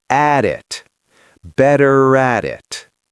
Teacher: The T in at becomes a flap D.